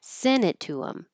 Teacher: the T is disappearing because it's after the N. Instead of sent it to him, send it to him.